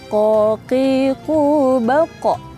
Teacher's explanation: Nah, sifat huruf qaf yang lain itu adalah isti'la. Jadi ketika kita nyebutkan itu langit-langitnya tuh ada di dalam gitu nyebutnya. Jadi kedengarannya tebal.